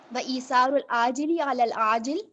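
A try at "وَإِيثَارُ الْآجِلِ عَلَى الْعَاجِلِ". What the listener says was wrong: یہ دونوں عاجل ہیں؟ دونوں عاجل ہیں. ٹھیک ہے, اس کو ری چیک کرنے کی ضرورت ہے.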